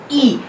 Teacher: and it is just about half close, ये जो हमारी हाफ क्लोज पोजीशन है ये इसके ऊपर आता है, और ये अनराउंडेड वोवल है, तो हम इसी तरह से इसे फ्रंट हाफ क्लोज अनराउंडेड वोवल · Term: छोटा ई